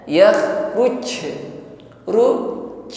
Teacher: Tapi ingat di sini yang memantul bunyi hurufnya ruj, bukan angin yang memantul. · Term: qalqalah